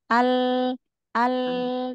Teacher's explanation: dua tepi lidah secara bersamaan bertemu dengan gusi atas huruf lam